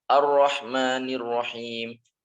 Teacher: Di roknya jangan sampai terlalu banyak getar ya.